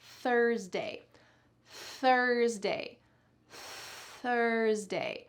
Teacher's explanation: The second way to pronounce the TH sound is unvoiced, or we can also call it aired. There's a lot of air that comes out. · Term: unvoiced TH